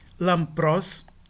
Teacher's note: Nós temos um pi aqui e a nasal que o antecede vai ser um mu e não um nu. Um mu porque pi é labial e mu também é labial. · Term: nasal labial